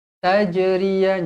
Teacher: Jim qalqalah sughra baca melantun